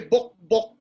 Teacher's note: So intuitive, you have to learn the language and know that the symbol for ka, the a should not be pronounced when you're talking of the insect, bok bok.